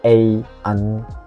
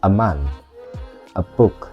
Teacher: bentuk kuatnya ei an tapi bentuk lemahnya adalah E ini e ya E yang kebalik ini namanya shwa